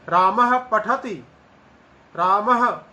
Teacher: ये जो विसर्ग है उसका वास्तविक उच्चारण अर्ध हकार सदृशो विसर्गः, आधे हकार के समान विसर्ग का उच्चारण प्राय होता है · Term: उपध्मानी ध्वनि